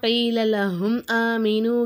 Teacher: அதாவது பா மீம் இந்த ரெண்டு எழுத்துக்களை தவிர வேறு எந்த எழுத்துக்கள் மீமே சாக்கினுக்கு அடுத்ததாக வந்தாலும் அந்த இடத்துல நம்ம என்ன செய்யணும், மீமே சாக்கினை வெளிப்படுத்தி ஓதணும். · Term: இல்ஹாரே சபவி